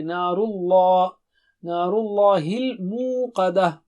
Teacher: لام جو لفظ اللہ کا ہے وہ بھی موٹا ہے